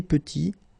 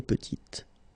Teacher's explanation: Final T is not pronounced, and then when you add this E at the end, you get the sound T, petite. Okay, il est petit, elle est petite.